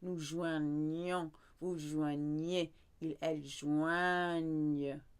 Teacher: Now we stick in an N sound to keep the nasal sound.